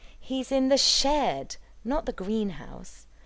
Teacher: we might put the emphasis on ‘shed’ because ‘shed’ has become the focus of the word group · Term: nuclear accent